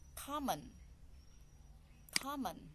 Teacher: So the stress is the first syllable, common.